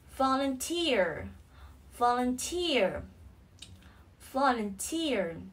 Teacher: Trọng âm rơi vào âm tiết thứ ba.